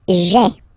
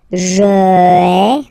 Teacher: we had this je, personal pronoun, and then when it comes near another vowel like a, for instance, then it tends to disappear